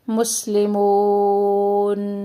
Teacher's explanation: حرف مدہ ہے، تو یہاں پہ جو ہم مد کرتے ہیں واو کو لمبا کر کے نون کو ساکن کر دیں گے